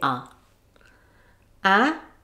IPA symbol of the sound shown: æ, ʌ